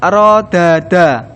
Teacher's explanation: Misalnya, rod-daada, ada dua jenis dal di sana. Dal pertama disukunkan dan kemudian digabungkan ke dalam dal kedua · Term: idgham